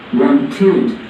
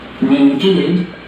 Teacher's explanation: The id, ed, adds an extra syllable to the word. Want, 1 syllable. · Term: id sound